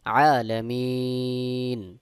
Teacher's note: সাকিন করে দিব এই জবরকে সাকিন করে দেওয়ার ফলে এখানে এখানে এক আলিফ মাদের জায়গায় তিন আলিফ টান দিয়ে পড়তে হবে এটার নাম হলো মাদ্দে আরজি